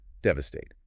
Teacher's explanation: Devastate. The stress is heavy on the very first syllable.